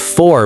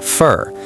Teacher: reduction includes sounds like to becoming ta and for becoming fur.